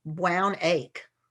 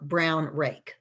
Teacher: they're just leaving out the r sound in both of those words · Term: omission